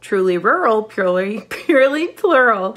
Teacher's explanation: americans also tend to use a lot of back of tongue bunching on l sound so that's the back of the tongue coming up and back